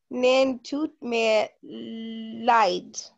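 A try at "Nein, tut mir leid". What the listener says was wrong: Okay, this one you are reading it, nen, that's English, nine.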